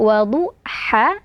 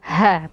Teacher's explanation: Bunyi ha pertama berasal dari tengah tenggorokan, dan bunyi ha kedua berasal dari pangkal tenggorokan.